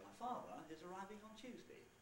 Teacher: two word groups with a boundary between father and is. I could get rid of that one if I wanted and put one there instead. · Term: word group boundary